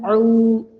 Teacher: എന്നപോലെ ആ എന്നോ പറയരുത് ലൈറ്റ് ആക്കി താഴ്ത്തി എ തൊണ്ടയുടെ മധ്യത്തിൽ നിന്ന് ഊ വെറും രണ്ട് കൗണ്ടേ നീട്ടാൻ പാടുള്ളൂ മൂന്നോ അതിനപ്പുറമോ ആയാൽ മദ്ദിന്റെ ശാഖ മാറും തെറ്റാണ് ഊ എന്ന വാവ് മദ്